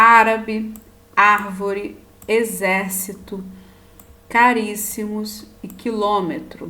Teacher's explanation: aquelas palavras que a sílaba tônica a sílaba mais forte é antepenúltima na palavra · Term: proparoxítonas, palavras proparoxítonas